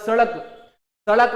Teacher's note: पढ़ाई में हमने जैसे ही बोला जीभ ऊपर गई फिर झटके से क्या होती है, नीचे आ जाती है। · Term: उत्क्षिप्त व्यंजन